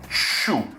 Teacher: o C-H-U em inglês é como se tivesse um T no começo